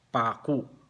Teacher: Ang diacritical mark ng pako ay long vowel sa first syllable, yung A, at saka glottal stop yung U.